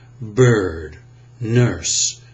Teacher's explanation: There, as I said it that time, bird, nurse. My tongue tip is down, but the center of my tongue is bunched and tensed. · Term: center of the tongue bunched